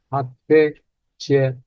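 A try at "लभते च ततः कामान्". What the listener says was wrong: Did you say che? No, not che. old mistake. Cha. Cha.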